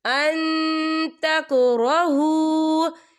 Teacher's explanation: تو ہم یہاں اکفا کریں گے، نون ساکن کی آواز کو ناک میں چھپائیں گے.